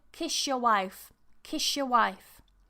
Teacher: And sa and ya, you get sha. So here we get a sha.